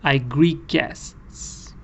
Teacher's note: te and gear are kind of mixed they're blended into one consonant sound which is the gear sound